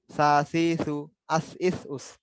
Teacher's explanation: জিহ্বার আগাটা উপরে দুই দাঁতের আগার সঙ্গে লেগে উচ্চারিত হবে, হালকা ভাবে নরম করে উচ্চারিত হবে।